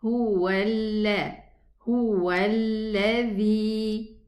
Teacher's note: We're going to drop hamzatul wasli and we are going to move from the waw dhamma to the lam shadda. Make sure that you don't stay at the lam shadda for a longer time.